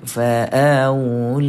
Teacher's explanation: kita jumpa dengan Mak asli panjang dua harakat